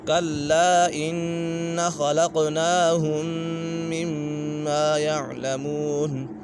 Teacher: ان نون مشدد ہے، نون مشدد میں ہمیشہ غنہ ہوتا ہے اور خا پر ہے، حروف مستعلی میں سے قاف بھی پر ہے، یہ بھی حروف مستعلی میں سے ہے تو یہاں قلقلہ بھی ہو رہا ہے قاف کے پر۔